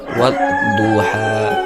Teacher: keluar dari sisi lidah menyentuh gerahang